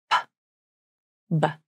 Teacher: the lips come together to stop the airflow. A small amount of air pressure builds up behind the lips. Then the air is released as you open the lips. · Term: P and B consonants